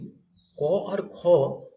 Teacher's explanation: অঘোষ মানে এই দুটো ধ্বনির উচ্চারণ গুরুগম্ভীর নয়